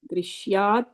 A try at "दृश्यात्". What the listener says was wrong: Yeah, I think you were saying drishayad. You said you said a full sha, just a half sha. Yeah, drishyad.